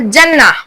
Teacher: जिम की आवाज जुबान के बीच से निकलती है।